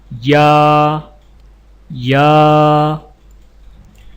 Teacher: یا یا کی ادائیگی میں زبان کے درمیان کو تالو کی طرف بلند کرتے ہوئے باریک آواز میں پڑھیں